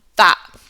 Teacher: This is a feature of modern British English. Glottal stops at the end of words.